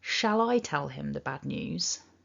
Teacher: the stronger version shall rather than shul emphasizes that word shall